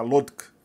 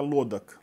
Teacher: Aí, no caso, como a gente perde a vogal final, as consoantes finais também se separam. Você insere uma vogal eufônica O para separar o encontro consonantal estranho do final, né? Fica lodk.